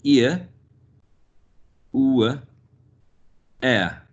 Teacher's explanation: The centering diphthongs are the ones ending in a schwa. · All these three are centering because they go to the center where the schwa is representing this vowel quadrilateral because it's mid central lax unrounded short vowel sound.